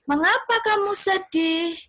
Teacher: Ya kan, pakai tanda tanya. Jadi intonasinya itu naik.